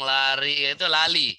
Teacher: Di Cina terbalik, tidak ada huruf R. Kalau ngomong lari itu lali.